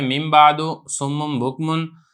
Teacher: جب نون ساکن اور تنوین کے بعد با آئے تو نون ساکن اور تنوین کو میم سے بدل کر اخفاء مال غنہ کریں گے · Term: قلب